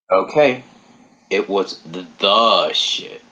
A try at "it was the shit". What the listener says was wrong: Emphasis on the, not emphasis on shit because it's not shit. It's the shit.